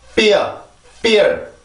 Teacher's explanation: F 발음은 순치 마찰음입니다. 윗니빨과 아랫입술을 이용해서 만들어주는 소리인데 그 보통 F 발음을 가르쳐 줄 때 어떤 강사들이 윗니빨로 아랫입술을 물어주면 돼요.